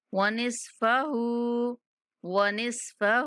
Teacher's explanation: ہا کا الٹا پیش پورا ادا کریں گے یعنی تھوڑا سا کھینچ کے پڑھیں گے